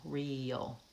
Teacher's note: Similarly, the word real, we have re and yul. We add a y sound and the schwa before the L